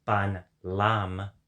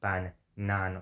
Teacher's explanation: when na denasalized to duh, it later merged into la